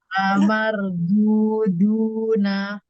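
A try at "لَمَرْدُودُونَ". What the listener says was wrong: Ya, ya lebih ringan. Jadi mungkin memang sih ketika roh sukun itu kan tebal, ikut tebal aja. Kadang-kadang kita tuh huruf dal itu apa kebiasaan kita mungkin nggak terlalu nyentuh banget ya.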